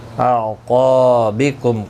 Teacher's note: قاف حروف مستعلیہ ہے، پر پڑا جائے گا، الف مدہ بھی ہے، 1 الف کی مقدار کے برابر کھینچ کر پڑھیں گے۔